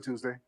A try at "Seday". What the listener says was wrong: it's a silent T, so you can call me Seday.